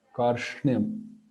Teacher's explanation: So that sh sound sh continues for a bit.